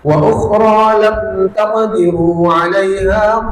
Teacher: Lam taqdiru itu namanya izhar syafawi. E jelas mim sukunnya. Jangan ada gunah.